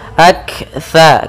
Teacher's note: kaf sukun itu punya sifat hamas, yaitu mengalirnya udara atau mengalirnya nafas kita